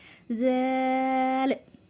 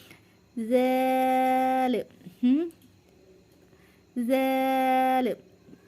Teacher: ज़बान की नोक और आगे वाले दो जो ऊपर वाले दांत हैं उसके किनारे से लगेगा, सिर्फ हल्का सा किनारा लगेगा, और होठ जो है वो हमारे पीछे खो जाएंगे, जैसे ज़ैल।